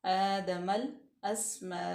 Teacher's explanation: मीम पे भी हम नाक में आवाज़ नहीं लेके जाएंगे।